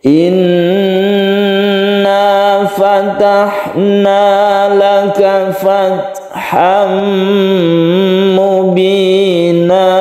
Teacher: tanwin diganti menjadi Mad bacanya satu Alif atau dua harakat Inna fatahnaaka fatham Mubina Jadi tidak boleh terlalu panjang untuk na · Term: Mad Iwat